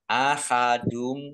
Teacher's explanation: langsung masuk ke huruf mim domah tanwinnya tidak dibaca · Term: idgham bi gunnah